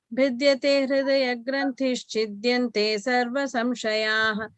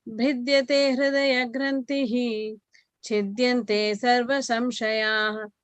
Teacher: So when you're combining with granthish chidyante, then you use the sh sound in the end, like which is here, granthish.